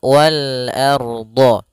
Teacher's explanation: Ardo, ar-nya tebal. Ro-nya dibaca dengan tebal. Kenapa? Karena dia ada huruf ra sukun di dalam huruf fathah. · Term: ro-nya tebal